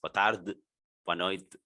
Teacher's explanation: you don't pronounce the final E almost